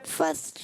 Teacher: صاد موٹا رکھنا ہے, فصل. صاد کو بھی نہیں ہلانا, لام کو بھی نہیں